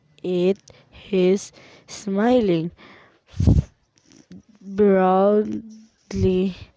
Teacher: The learner inserted h sound at the beginning of is.